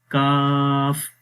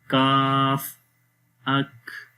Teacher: جب ہم کاف پڑھتے ہیں تو آواز نیچے کی طرف آتی ہے، اوپر بلند تالو کی طرف نہیں ہوتی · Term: استفال